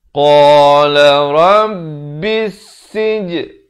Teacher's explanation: Alif lam syamsiah di sini lam tidak dibunyikan.